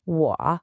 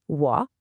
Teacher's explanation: See how my voice dips down and comes back up? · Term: third tone